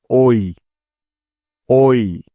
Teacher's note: স্বর অ এবং রস ই একসাথে মিলিয়ে পড়লে যেমন সাউন্ড হয় ঠিক তেমন ঐ